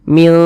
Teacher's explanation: disamarkan kemudian juga didengungkan